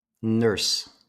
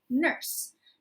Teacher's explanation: you have a slight bunched r you're saying it with an american accent which means if you picture your tongue and your mouth is